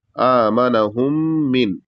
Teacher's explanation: میم کو ادا کریں گے تو دونوں جو ہونٹ ہے یہ ایک دوسرے سے مل جائیں گے